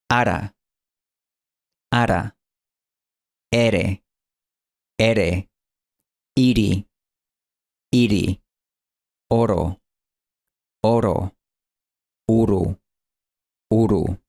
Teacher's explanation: este anzuelo representa el golpe alveolar, el mismo sonido de city en inglés de Estados Unidos.